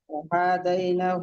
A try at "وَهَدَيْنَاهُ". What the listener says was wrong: না হা টান হবে না দালও টান হবে না এগুলো সব তাদের ওয়াহাদাইনা